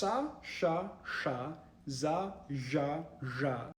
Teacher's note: fricative sounds, where the air is sort of hissing out of a narrow channel in your mouth